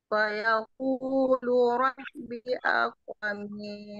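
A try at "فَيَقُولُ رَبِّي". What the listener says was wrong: Rabbi panjang.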